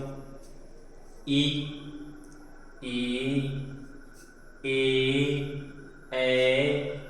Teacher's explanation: जिन स्वरों के उच्चारण में जीभ का आगे का हिस्सा उठता है, यानी कि आगे से जो हम उसको बोलते हैं तो वो अग्र स्वर कहलाते हैं